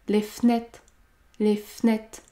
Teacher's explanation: j'ai supprimé le E du mot fenêtre car il y a une seule consonne prononcée devant. F. Les fenêtres, les fenêtres.